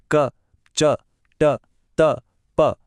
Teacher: यहां क्या होता है कि हवा के बहाव को मुंह के अंदर पूरी तरह से ब्लॉक कर दिया जाता है और फिर अचानक से छोड़ दिया जाता है। क, च, ट, त, प बोलकर देखें, वो स्टॉप एंड रिलीज एक्शन महसूस होता है। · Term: स्पर्श व्यंजन